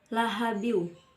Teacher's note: ayat pertama terdapat lafadz lahabiw hukum bacanya yaitu Idgham Bighunnah karena karena ada fathatain yang bertemu dengan huruf Waw cara membacanya yaitu masuk dengan mendengungkan